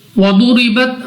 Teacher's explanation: ضاد مستعلیہ میں سے ہے، موٹا پڑھیں گے، منہ اور آواز کو کھول کر، را کے نیچے زیر ہے تو اس صورت میں را کو پڑھا جائے گا باریک